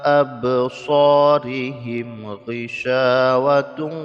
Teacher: di sini ada mim sukun bertemu dengan ghain hukumnya ilhar jadi dibaca mim sukun dengan jelas tanpa didengungkan